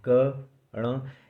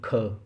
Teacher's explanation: जैसे आप बोलेंगे क, तो उसमें ह की ध्वनि नहीं है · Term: अल्प प्राण